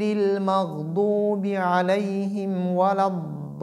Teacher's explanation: il sait que quand sukun vient après mad, c'est mad al-lazim et qui est prolongé de 6 harakat · il est obligé de tirer, de prolonger ce mad de 6 harakat